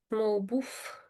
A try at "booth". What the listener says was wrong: So you're making the TH sound like an F. So you're saying booth. So it's booth, booth.